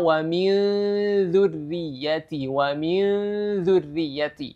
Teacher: gunnahnya persiapan menuju makhraj huruf setelahnya, yaitu di sini makhraj huruf dzal yang berada pada ujung lidah digigit ya, dikeluarkan sedikit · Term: ikhfa